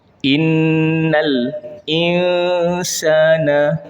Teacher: Innal insana insa tu kita baca dengan dengung.